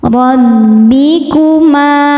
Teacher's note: alabbikuma ro dibaca tafkhim karena berharakat fathah maka dibacanya tebal rbikuma ma hukumnya mad thobi'i zohiri karena ada alif didahului fathah maka huruf mimnya panjang dua harakat · Boleh empat, boleh lima harakat. alabbikuma ro dibaca tafkhim karena berharakat fathah maka dibacanya tebal